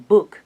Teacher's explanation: the sound b, as in book, is a voiced bilabial stop